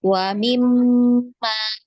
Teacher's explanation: mim di tasydid itu wajib digunnah ya. Ditahan 2 harokat.